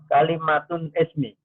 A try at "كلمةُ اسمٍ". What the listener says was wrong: Kalimatul ismin. Tidak ada alif. Kalimatul ismin. Atau kalimat isim gitu aja sudah boleh.